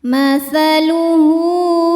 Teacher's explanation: Hu hukumnya mad silah qasirah karena ada ha damir yang diapit huruf hidup dan setelahnya ini bukan hamzah. Maka ha damirnya panjang dua harakat.